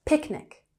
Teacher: Picnic has emphasis on the first syllable